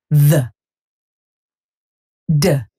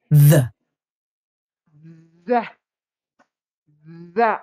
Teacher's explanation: Hay una ligera vibración en la lengua cuando lo colocamos con los dientes. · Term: sonido con TH